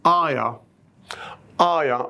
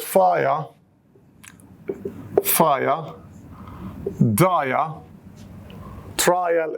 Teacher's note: if you remember the diphthong, I, just we add schwa, it becomes aya.